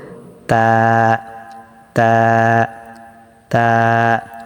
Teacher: জিহ্বার আগা সামনের উপরের দুই দাঁতের গোড়ার সঙ্গে লাগিয়ে ত দাল তা উচ্চারিত হয়